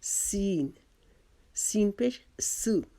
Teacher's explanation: سین، سین زبان کی نوک کو سامنے کے جو ہمارے نیچے کے دو دانت ہیں ان کے کناروں سے مضبوطی سے ہم لگائیں گے اور اس کو سیٹی کی آواز میں پڑھیں گے، باریک کریں گے، اپنی زبان کو چوڑا رکھیں گے